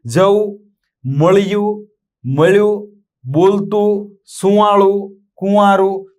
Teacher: તમે જુઓ તો ઉપર અનુસ્વાર લખાય છે પણ બોલાતો નથી